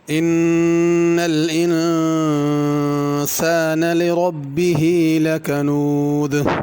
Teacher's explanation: ان پہ غنہ ہے اور آگے انسان کے پہلے نون پہ بھی غنہ ہے